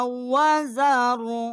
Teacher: کاف جو ہے کلا کا یہ چھوٹا کاف ہے، یہاں ہم نے اس قاف کو لام کے ساتھ مشدد کیا ہے، لا وزر، اور یہاں ہم نے جو ہے وقف کیا ہے، را جو ہے یہاں ساکت ہو گئی ہے، اس کی زبر جو ہے وہ نہیں پڑی گئی.